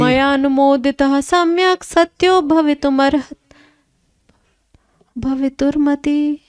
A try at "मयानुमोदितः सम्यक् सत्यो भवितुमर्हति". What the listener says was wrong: अर्हति होना चाहिए, भवितुमर्हति।